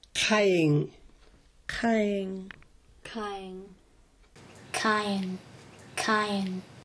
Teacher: similar to the sound at the beginning of the English word call, but the tongue is touching farther back in the throat.